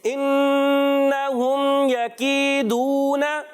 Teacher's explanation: کاف کی ادائیگی کلیئر کرنی ہے. کاف باریک رکھنا ہے، موٹا نہیں کرنا. یا مدہ ایک الف کھینچ کر ادا کریں گے.